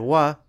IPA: w